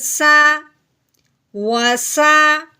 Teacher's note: سین ہے سیٹی والا حرف، اس کو ہم نے سیٹی کے بعد نکال کے پڑھنا ہے۔